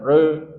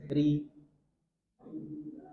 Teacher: karena kasroh maka dia dibaca tarqiq tipis, ri. Bukan re tapi ri.